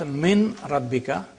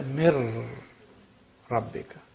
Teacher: noon completely is lost. It becomes ra. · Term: complete assimilation